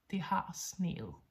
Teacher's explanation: Note that the ET ending is actually a soft D sound. There is no D in the writing, but there is a soft D in the sound.